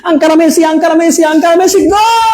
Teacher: এই যে লটা অনেক টেনে উচ্চারণ করা হয়। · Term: তরল